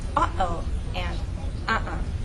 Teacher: Inside here, you're going to cut off the air, cut off the sound. It's like holding your breath, but not with your lips, here in the back of your throat. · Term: glottal stop